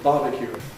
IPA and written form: ˈbɑːbəkjuː (barbecue)